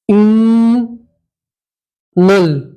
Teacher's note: نون کے اوپر تشدید ہے تو نون میں گننا کرتے ہیں